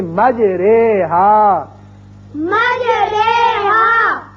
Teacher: اب قرآن پاک میں ایک ایسا لفظ ہے، اصل میں یہ ہے مجراہا، اور یہاں امالے کا قاعدہ یہ ہے کہ ہم زبر کو زیر کی طرف مائل کر کے پڑھیں گے · امالہ کہتے ہیں مائل کرنے کو، جیسے یعنی زبر کو اگر زیر کی طرف مائل کیا جائے یا الف کو یا کی طرف مائل کیا جائے تو وہ جو آواز نکلتی ہے وہ درمیانی مجہول سی آواز ہوتی ہے